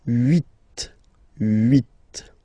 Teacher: this H letter here, okay, doesn't exist phonetically, so we don't really pronounce it, okay? So if you listen carefully, you will only listen or hear these vowels at the beginning of the word.